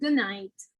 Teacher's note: Also, good night, because not only is about that T, but we can also see in other consonants, as in good night, where the D in good will become an N, as in good night.